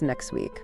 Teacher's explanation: sometimes sounds even disappear completely, like the T in next week, which becomes next week.